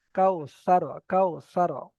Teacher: তো এখানে ওয়াও লিন বলতে হবে, ওয়াও মাদ্দা যেন না চলে আসে মুখে, কারণ এখানে যদি পেশ হতো তাহলে ওয়াও মাদ্দা হতো। তো ওয়াও লিন হবে, নরম আওয়াজে তাড়াতাড়ি পড়তে হবে